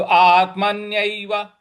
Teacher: म के बाद जो आधा न है उस पर भी हमको आघात देना है